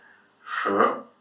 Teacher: To pronounce the SH sound in Chinese, you kind of roll your tongue a little bit backwards.